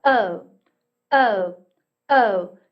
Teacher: 우리말의 오보다는 입이 좀 많이 벌어집니다. 그렇다고 어보다는 조금 덜한 오하고 어의 한 중간 정도에서 그대로 으로 넘어가요. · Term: 이중모음